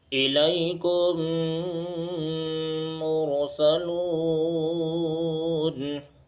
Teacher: میم ساکن کے بعد دوبارہ میم آ رہا ہے، اس لیے یہاں ادغام شفوی ہوگا